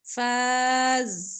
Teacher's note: فقد قاف موٹا دال پر کلکلا